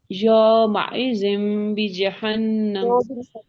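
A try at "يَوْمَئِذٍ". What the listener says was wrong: یو نہیں پڑھیں گے اس کو، کیا نہیں، یو کی ساؤنڈ ہی نہیں آتی، یا زبر واؤ، یو، یو اور یو میں فرق ہے نا، یو پڑھنا ہے، یو.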